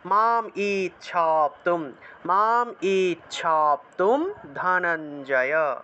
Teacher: এই যে ইচ্ছা আকারটা আছে, আকারটাকে একটু টান দিয়ে উচ্চারণ করতে হয়